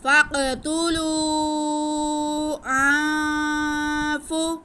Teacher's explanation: फ़क़्तुलू हमज़ा के बाद नून साकिन और फ़ा हरूफ इख्फ़ा में से नून साकिन के बाद फ़ा आ रहा है, इसलिए हम नून की आवाज़ को नाक में छुपा के पढ़ेंगे।